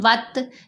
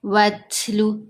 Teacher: ابھی جیسے یہاں تا ہے تو ہم وت نہیں پڑھیں گے، تا کی آواز کو تھ کی آواز میں بدل دیں گے، جیسے وتلو، جیسے اردو میں نہیں بولتے ہاتھ تو جو ساؤنڈ بنتی ہے تھ، وہ والی یہاں ساؤنڈ آئے گی۔ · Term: کمزور آواز